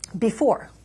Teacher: They call it a foot in poetry. So it's a two-syllable foot in which the first syllable is unstressed and the second syllable is stressed